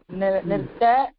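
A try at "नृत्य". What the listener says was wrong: இல்ல இல்ல நீங்க யாவ விட்டுட்டே சொல்றேன் இந்த திருப்பி மத்தியம புருஷ சொல்லுங்க நிர்த்ய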